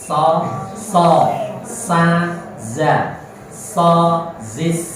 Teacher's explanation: Ini 3 huruf so, za, dan sa mempunyai sifat sofir. Sofir itu semruit, keluar suara semruitnya tadi.